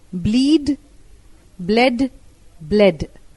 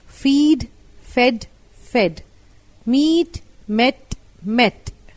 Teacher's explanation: only shorten the vowel in the past tense and the past participle